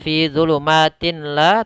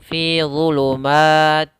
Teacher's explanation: tanwinnya masuk ke lamnya langsung ke huruf yang bertasydid · Bila gunnah yaitu apabila ada nun mati atau tanwin bertemu dengan lam, maka nun suara nunnya atau suara tanwinnya langsung masuk ke lam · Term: idgham bila gunna, idgham bila gunnah